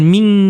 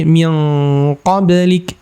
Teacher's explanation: Nun sukun ketemu qaf. Ini ikhfa. Ikhfa untuk qaf itu dengungnya tebal ya. Min qa jangan min tapi min qablik ya.